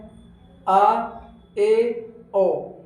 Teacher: अर्ध विवृत जिसमें लगभग मुंह आधा खुला रहता है।